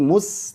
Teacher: Sin ini tipis jadi jangan monyong